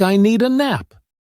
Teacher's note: It often sounds like I need a nap. The words need and a connect so smoothly that the d sound blends in. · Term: linking sounds